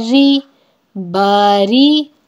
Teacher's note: را پہ زیر ہے اس لیے را کو باریک پڑھیں گے. ری ری ری نہیں پڑھیں گے, زیر ہے اس لیے اس کو ری پڑھا جائے گا.